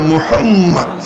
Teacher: দুই ঠোঁট দুইবার মিশে